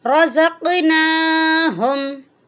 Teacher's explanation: یہاں پر نون کے اوپر کھڑی زبر ہے، اس کو بھی ہم لمبا کریں گے